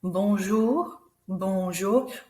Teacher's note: We don't say the N in the middle, so it's not bonjour, it's bonjour.